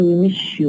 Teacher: we have to change from s to sha